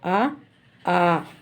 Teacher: పై దవడ కింద దవడలు పూర్తిగా విడిపోవటం వలన పుట్టే అచ్చులే వివృత్తాలు అంటారు